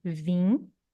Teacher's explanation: o elemento palatal e o elemento nasal, eles formam uma vogal nasal in, se eles ocuparem um núcleo complexo inteiro